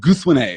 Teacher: the final E is a schwa and not stressed at all